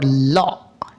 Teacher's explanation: জিহ্বার উভয় পাশ দিয়ে বাতাস বের হয়ে এই সাউন্ডটি উচ্চারিত হবে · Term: লাদারেল কনসোনেন্ট সাউন্ড